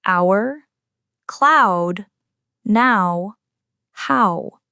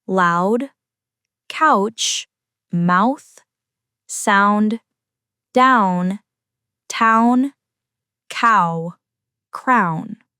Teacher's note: This diphthong begins with an open /æ/-like vowel, then glides into a higher, rounded vowel. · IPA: /aʊ/